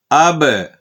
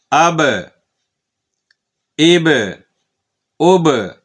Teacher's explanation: اب حمزہ زبر با، اب اس کو اب ایسے نہیں پڑھنا کہ بالکل ہونٹ آپس میں ملیں اور ملے ہی رہیں، آواز بند ہو جائے، ایسے نہیں، بلکہ اب، یہ اب، اب، اب، یہ جو آواز واپس آتی ہے نا ہونٹ کھلنے کے بعد، اسے قلقلہ کہتے ہیں